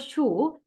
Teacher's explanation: the sound sh is post-alveolar because it produced with the tongue just behind the alveolar ridge.